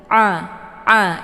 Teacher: Tapi yang benar itu posisikan huruf ain itu pada posisi yang benar, yaitu di tenggorokan bagian tengah